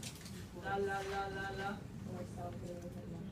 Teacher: A voiced alveolar liquid.